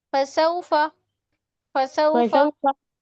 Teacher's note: आप पढ़ रही हैं फसौफा फा को नहीं खींचिए बिल्कुल